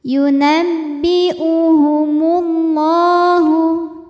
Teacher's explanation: alif lam menghadapi huruf Syamsiyah yaitu huruf lam maka alif lam ini tidak kita baca dilewat ya atau ini biasa disebut dengan Idgham Syamsi yunabbiuhumullahu la dihukumi